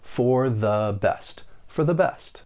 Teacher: to keep in mind is that the article the it is the weak the and you're using the schwa sound that uh sound because it comes before a word that begins